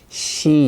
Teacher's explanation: your tongue is bent back like that and creating friction here in Korean it's she your tongue is flat and creating friction